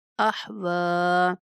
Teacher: وقف کی صورت میں واو کی کھڑی زبر پوری پڑھیں گے